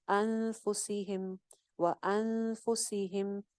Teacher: अन पे इख्फा हो रहा है, नून साकिन के बाद फा आ रही है। फा जो है वो ना तो हरूफ हल्की में से है ना यरमलून में से है, तो यहाँ पे ना इदगाम हो रहा है ना इजहार हो रहा है ना इकलाब हो रहा है, बल्कि यहाँ पे इख्फा होगा, नून को छुपा के पढ़ेंगे।